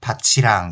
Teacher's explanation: 티읕이 치읓으로 바뀌어서 밭이랑 이렇게 최종 발음은 나게 되죠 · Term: 구개음화